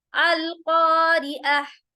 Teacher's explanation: आयत को स्टॉप करने के साथ ये जो ता है ये हा में चेंज हो जाएगा, इसको हम कैसे प्रोनाउंस करेंगे, हा, देखें, अल क़ारिअह। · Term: ताए मरबूता